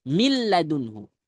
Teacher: Sedangkan pada idgham millunhu nunnya sudah tidak ada. Jadi dia melebur sempurna pada huruf yang kedua.